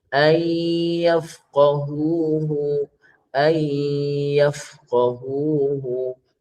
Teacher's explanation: Kalau dia idgham, tengok idgham apa? Idgham di sini nun mati bertemu ya, idgham ma'al ghunnah, baca 2 harakat.